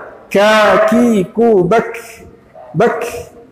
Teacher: Huruf kaf ini dari segi mengalir atau tertahannya udara, mereka adalah huruf yang harus mengalir udara.